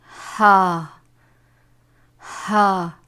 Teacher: حلق کے آخر حصے سے